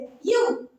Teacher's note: இது மேல்வாய் பல்லை கீழ் உதடு பொருந்துவதால் பிறக்கிறது